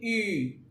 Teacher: ई में देखिए आपका मुख चौड़ा हो रहा है